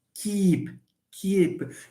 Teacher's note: a long vowel it's front we call this a front vowel e is a front vowel it's a high front vowel okay which happens to be long so when we produce K in ke the tongue is not